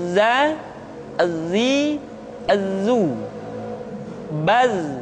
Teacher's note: ketika kita mengucapkan huruf za, suara kita mengalir, akan tetapi nafas tidak boleh mengalir